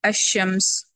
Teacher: یہاں پہ ادا نہیں ہو رہا ہے کیونکہ لام کا ادغام ہو گیا شین کے اندر، لیکن لام موجود ہے، لام تعریف ہے وہاں پہ، اسی وجہ سے شین پر شدہ آیا ہے.